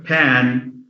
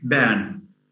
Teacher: Arab learners are fond of changing the pa sound to ba. So instead of saying pan, they would say ban.